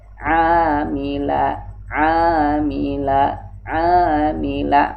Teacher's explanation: Kalau ain ini makhrajul hurufnya adalah huruf khalqi, bagian tengah